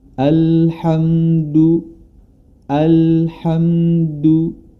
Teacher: pertengahan dia tidak tertekan suaranya tidak tertekan juga suaranya tidak terlepas tidak didapati huruf lam tersebut adalah huruf-huruf dari sifat Qalqalah jadi jangan dipantulkan